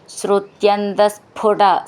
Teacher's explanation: സ്ഫു എന്നുള്ളതിൻ്റെ ഫു എന്ന് നന്നായിട്ട് ഊന്നി പറയണം. പാ ഫ രണ്ടാമത്തെ ഫ എന്നാണ്.